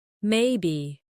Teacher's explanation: When they are unsure, the voice might stay flat or rise slowly.